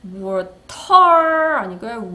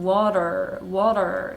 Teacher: 자, 라고 영국식 영어에서는 T 소리를 하고 다 내주는 반면에 영어에서는 네, 버터 발음 굴리느라고 이 T가 라고 나지 않는 경우가 굉장히 많습니다. 언제 특히 그러냐면 모음과 모음 사이에 T가 있을 경우에 이거 flap sound라고 하는데요. 요거 리을 소리로 달라져요. 그래서 water 아니고요 water, water 이라고 할 건데 조심할 것은 water 하고 끝나면 안 되고 마지막에 있는 our 소리 our 소리 요거 짚어주셔야 됩니다.